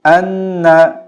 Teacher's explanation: আন্নার ক্ষেত্রে গুন্না হবে মানে নাকে ঢুকিয়ে পড়তে হবে